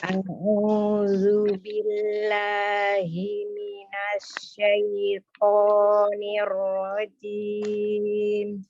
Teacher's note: Huruf zal itu ujung lidahnya ada di ujung gigi seri atas, tetapi dia tidak menempel kuat. Ya, tidak ya, jadi tidak menempel kuat ya, tidak menempel kuat, hanya menyentuh saja karena huruf zal ini dilihat dari sifatnya itu termasuk memiliki sifat yang rohlah ya.